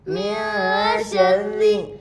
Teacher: नून साकिन के बाद इफ़ा के 15 हरूफ में से शीन है इसलिए नून की आवाज़ को नाक में छुपाकर पढ़ेंगे, इसको इफ़ा कहते हैं।